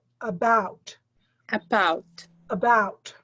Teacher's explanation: When you say the word about, the emphasis is on the second part of the word